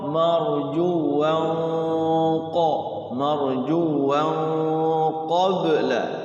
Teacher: Jadi mulutnya itu siap mengucapkan huruf qaf sehingga dengungnya itu samar itu bunyi qaf. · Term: ikhfa hakiki